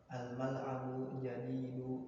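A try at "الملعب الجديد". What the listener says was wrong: Enggak, al-mal'abu jadidu. Alif lamnya jangan antum hilangkan. Ketika ada alif lam jangan dihilangkan.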